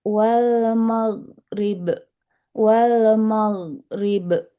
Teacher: huruf ghain wal maghrib harus mengalir dan tebal suaranya